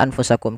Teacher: adanya nun sukun bertemu dengan huruf Fa yang di mana nunnya disamarkan ke huruf Fa nunnya disamarkan ke huruf Fa jangan diganti ya jangan jangan anfusakum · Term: ikhfa